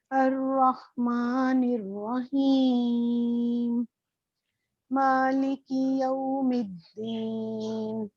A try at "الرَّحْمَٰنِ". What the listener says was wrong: اچھا ایک تو آپ کا ہا ہے نا, اس میں خو کی ساؤنڈ آتی ہے. رحمان تو کیسے ٹھیک کریں گے آپ؟ رحمان مطلب خ ساؤنڈ آ رہی ہے آپ کی رحمان میں.